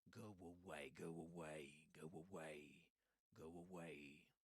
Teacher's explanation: Go away. So in go away, you will kind of hear a w sound in the middle. Go away.